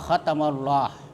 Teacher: Jadi lam pertama itu tidak terbaca, tapi terbaca yang kedua. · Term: idgham syamsiyah